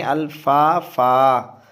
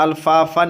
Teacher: یہاں الفافن ہے لیکن پڑھنا ہے الفافا، دو زبر ہے تو اس کو ایک زبر اور الف پڑھنا ہے